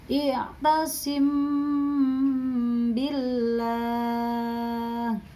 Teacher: MI mati bertemu dengan huruf ba maka dibaca samar di bibir dan disertai dengung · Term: Ikhfa Syafawi